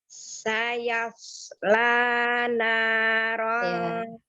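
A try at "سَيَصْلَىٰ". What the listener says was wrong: Ya, lebih natural lagi shotnya, tidak dibantu dengan bibir. Sayasla, bukan sayasla.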